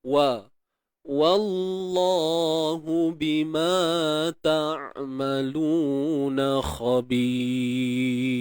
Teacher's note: Sebelum lam kalimah Allah ada huruf baris atas, maka perlu ditebalkan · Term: taghliz